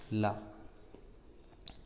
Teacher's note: ला के उच्चारण में जिह्वा के दोनों ओर से वायु बाहर निकलती हुई रगड़ के साथ आगे बढ़ती है, इसलिए इसको पार्श्विक ध्वनि कहते हैं।